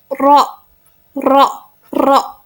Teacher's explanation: ujung lidah mendekati langit-langit tanpa menyentuh. Huruf yang dikeluarkannya itu adalah huruf ro.